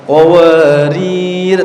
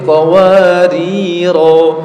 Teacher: Di ujung ayat yang ke-15 namanya sif mustatil ya. Jadi kalau dibaca wakaf dibaca panjang dua harakat